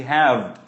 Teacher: উপরের দাঁতটা নিচের ঠোঁটটা একসাথে লেগে একটা ভাইব্রেশন তৈরি হচ্ছে